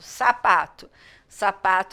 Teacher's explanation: mais forte é o p o to é a última sílaba só que na palavra sapato o Tu quase nem sai sai todo fraquinho